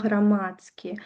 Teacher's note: ДСК у нас перадаецца як ЦК.